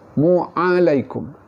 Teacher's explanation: Huruf ain juga makhrajnya di tengah halkum.